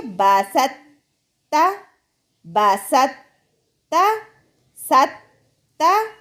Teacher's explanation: ہم نے طوا کو تا میں مدغم کرتے ہوئے سین کو تا سے ڈائریکٹ ملا کر پڑھنا ہے